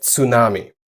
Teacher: It's basically a T immediately followed by an S.